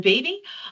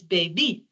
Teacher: in French it's the opposite it's baby and they put the emphasis on the second syllable